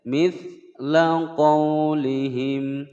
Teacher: Mithla qaulihim ada layin tidak dibaca panjang.